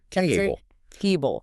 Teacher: You don't say table with equal force on both halves. You punch the first part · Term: word stress